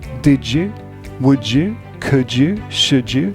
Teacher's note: So did you, D plus Y sounds like a j.